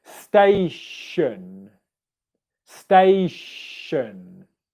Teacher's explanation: in the word station it's an unvoiced sh sound